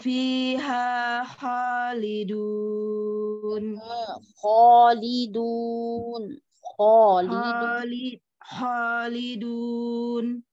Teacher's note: Kho ada gesekan ya, tidak kho, kalau kho tanpa gesekan.